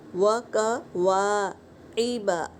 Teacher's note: وَقَوَاعِبَ، عین حلق سے ادا کریں گے، با بھی حرکت ہے۔